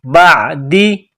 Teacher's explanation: عین کو گلے سے نکالیں گے زور لگا کر